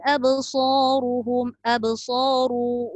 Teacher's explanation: ru dibaca tafkhim atau tebal